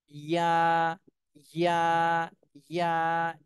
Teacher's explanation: এই যে এটা জিহ্বার মধ্যখান উপরে তালুর সঙ্গে লাগায় ইয়া, ইয়া, ইয়া, একটু চাপ দিয়ে জিভটা একটু উপর থেকে চাপ দিতে হবে।